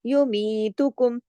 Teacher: मैंने यू और मी को छोड़ के तू कुम सब जल्दी जल्दी पढ़ा, लेकिन यू मी को थोड़ा खींचा, दो हरकत